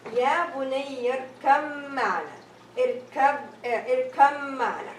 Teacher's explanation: So the ba sound is dropped